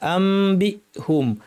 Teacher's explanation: বি বলার সাথে সাথে সব আওয়াজ বন্ধ কোন আওয়াজ যেন না থাকে অনেকে এরকম আওয়াজ শোনা যায় এরকম হবে না আমবিহুম বি আসহিম